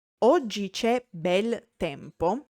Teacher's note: However, if I say oggi c'è bel tempo, today it's nice weather, I'm using the truncated form of bello, since the whole last syllable is suppressed.